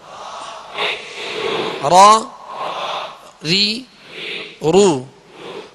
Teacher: اس میں اس کی ادائیگی میں آواز میں کپ کپاہٹ ہوگی, جسے راشا کہتے ہیں, کپ کپاہٹ ہوگی. وہ اس وجہ سے کہ اس کی خوبی ہے کہ اس میں تکرار کی مشابہت ہو, مکمل تکرار نہ ہو کہ را ہو جائے.